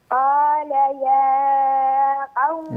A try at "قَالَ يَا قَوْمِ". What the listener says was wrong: لا لا يوجد مد هنا، قال يا قوم،